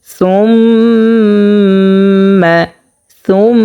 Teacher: সুম্মা এখানে গুণনা করিয়া পড়তে হবে। এখানে যে গুণনাটা হয়েছে সেটা হচ্ছে ওয়াজিব গুণনা।